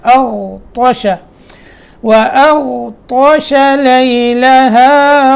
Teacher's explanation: طا یہ موٹا ہے، اس سے پہلے غین وہ موٹا ہے اور غین ساکن ہے